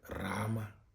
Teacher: Another version of the R sound is its slack voice version